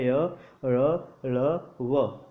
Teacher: साथियों इनका उच्चारण जब भी हम करते हैं तो देखते हैं कि मुख के अंदर के अंग जो हैं आपस में पूर्णतः स्पर्श नहीं करते हैं, इसीलिए इनको अंतस्थ व्यंजन कहा जाता है।